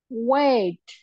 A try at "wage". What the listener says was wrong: Great, dear, but it's not a weight, it's a wage.